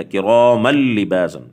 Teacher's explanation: تھا لام اور را پہ بغیر غننے کے، جیسے کراما لباسا، میم دو زبر نون تنوین ہے لیکن بعد والا حرف حروف ادغام کا ہے، یرملون کا حرف ہے لیکن بغیر غننے کے